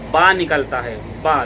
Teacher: दोनों होंठों की तरी का हिस्सा यानी दोनों होंठ मिल जाएंगे तो बा निकलेगा, लेकिन तरी का हिस्सा मिलेगा यानी अंदरूनी हिस्सा मिलेगा।